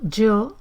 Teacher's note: Puede ser más suave, yo, puede ser más africado, más sonoro, yo, o puede ser lo que se llama reilado, yo.